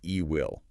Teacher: I keep a little ghost of the E sound from we, but it's very short and quick